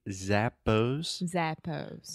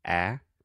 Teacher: this is a very open sound so your mouth is very open and to the front